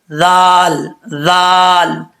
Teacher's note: زبان کی نوک اوپر والے دانتوں کا نچلا حصہ جو ہے اس سے لگے گی تو یہ ذال پڑھا جائے گا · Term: ذال کا مخرج